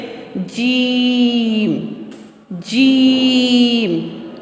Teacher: جیم جو ہے یہ ہماری زبان کے درمیان سے اور اس کے بالمقابل اوپر کا تالو ہے۔ جیم زبان کا درمیان اور اس کے بالمقابل اوپر کے تالو سے ادا ہو رہا ہے